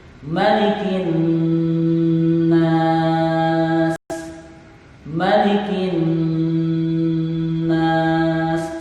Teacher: Sekali lagi kita mendapatkan huruf nun yang bertasydid. Hukum bacanya adalah gunnah, dibaca dengung. Adapun lama panjangnya, lama dengungnya adalah minimal 2 ketukan.